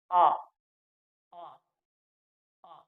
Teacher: विवृत में हमारा मुख है जो पूरा खुला है, इसलिए इसको विवृत बोलते हैं, विवृत स्वर कह सकते हैं।